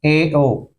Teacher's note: अर्ध समृत half close ए ओ, मुंह आधा बंद होता है, ए ओ को अर्ध समृत स्वर कहते हैं